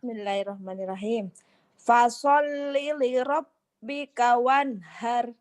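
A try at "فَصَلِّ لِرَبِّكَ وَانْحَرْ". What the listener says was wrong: Ternyata nggak pinter tajwid, pinter ngajinya ya. Masya Allah.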